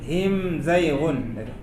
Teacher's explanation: Idhar syafawi maknanya idhar artinya jelas, syafawi artinya bibir, maksudnya jelas di bibir bacaannya.